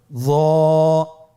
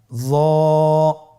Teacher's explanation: হরফটি হলো মোটা হরফ, বারিক করে পড়া যাবে না এবং হরফটি উচ্চারণ করার সময় অবশ্যই 1 আলিফ টেনে পড়তে হবে। · জিহ্বার আগা, সামনের উপরের 2 দাঁতের আগার সঙ্গে লাগিয়ে উচ্চারিত।